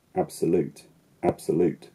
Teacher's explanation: which has a secondary stress syllable an unstressed syllable and then a primarily stressed syllable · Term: primary and secondary stress